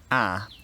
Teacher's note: is pronounced with the tongue at the front of the mouth